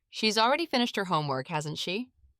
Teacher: Try saying it again, paying attention to the rising tone at the end.